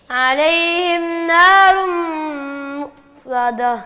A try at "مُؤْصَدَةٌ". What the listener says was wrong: مؤصدہ. صاد صاد کی آواز صحیح نہیں آ رہی.